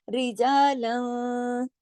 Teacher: रिजालन यहाँ इख्फा हकीकी, क्योंकि लाम दो जबर लन की तनवीन के बाद काफ आ रहा है, इख्फा हकीकी गुन्ना कामिला होगा। रिजालन थोड़ी आवाज नाक पे जाएगी, थोड़ी बाहर रहेगी, और गुन्ना होगा सेकंड लेवल का, दूसरे दर्जे का, जिसको गुन्ना कामिला कहा जाता है।